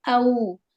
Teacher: او یہاں پر واو لین ہو رہا ہے نا، واو کو ہونٹ کو گول کر کے پڑھیں گے. او، اور 1 سے تھوڑی سی 1.5 حرکت یہاں پر ہوتی ہے حروف لین میں